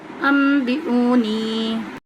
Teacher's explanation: نون ساکن کے بعد با رہا ہے تو نون کے بعد میم سے بدل جائے گی، یہاں پہ اقلاب کریں گے اور حمزہ کو جلدی پڑھیں گے اور ساتھ میں واو مدہ ہے تو لمبا کریں گے واو کو۔